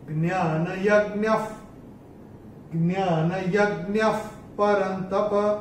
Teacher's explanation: विसर्ग के बाद प या फ आता है, तो विसर्ग की जो हम उच्चारण होता है वो होता है फ। फूक मारते हैं ना, वैसा फ होता है।